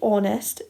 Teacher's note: when we say honest, it sounds like it starts with an O, because the H is silent